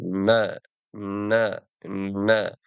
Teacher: Nun harfining maxraji tilning uchi va tanglayning quyi qismi. Arab tilida nun undosh g'unna, ya'ni dimoq bilan talaffuz qilinadi.